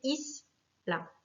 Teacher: Le mot isla, pareil, finit par une voyelle, un A, donc c'est la première syllabe qui va être accentuée